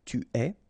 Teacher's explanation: Tu es, okay, so it's quite strange because you get this ES, but then phonetically it's est, alright, quite open